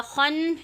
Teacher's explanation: یہاں پہ ہم نے خا کو مستعلیہ کی وجہ سے موٹا پڑا اور نون پہ مشدد کیا